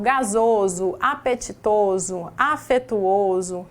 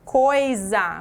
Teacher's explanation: o s entre duas vogais tem som de z